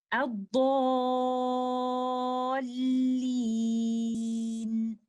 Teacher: सो अब आप नोट कर सकते हैं कि इस लफ्ज की अदायगी के वक्त लेटर लाम पर पहुंचते हुए मैंने नबर किया है, इस हर्फ पे थोड़ा प्रेशर डाला है, आवाज को हल्का सा ऊंचा किया है ताकि सुनने वाले को लेटर लाम मुशद्दद क्लियरली सुनाई दे सके।